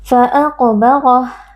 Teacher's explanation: ra huruf tebal kita baca dengan mengangkat pangkal lidah karena ra di sini berharakat fathah